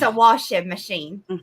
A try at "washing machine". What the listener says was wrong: Yeah, but you're still not saying the G at the end, so it's still washing. It's not even washing. Machine.